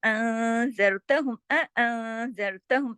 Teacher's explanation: نون ساکن کے بعد زال آ رہا ہے تو یہاں پر ہو رہا ہے اخفا ، देखिए यहाँ गुन्ना भी हो रहा है, ज़रतहुम, ठीक है?